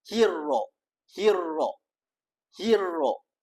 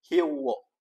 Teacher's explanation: huruf ra makhrajnya pada lidah bukan pada bibir. Jadi ketika kita menebalkan huruf ra bukan menggunakan bibir tapi menggunakan lidah.